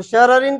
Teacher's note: شررن کے اندر دوسری را باریک ہے تو پہلی والی را کو بھی باریک پڑھیں گے